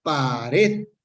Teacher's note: Polisílaba y tiene el acento en la última sílaba, sin embargo, esta esta palabra nos, no se acentúa o no lleva tilde. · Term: aguda